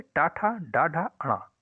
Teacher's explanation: ट वर्ग के जितने भी वर्ण है जैसे टा ठ ड ढ अण इन सभी का उच्चारण स्थान मुर्धा है